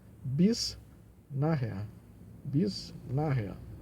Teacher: Nós temos nach, a sílaba mais forte, na irrea, esse H aqui é aspirado, né?